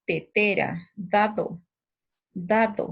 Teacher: la punta de la lengua, el ápice, va a entrar en contacto con los dientes superiores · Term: Dentales